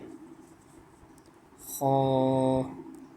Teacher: ख हलक के शुरू से जो मुंह की तरफ है वहां से अदा होता है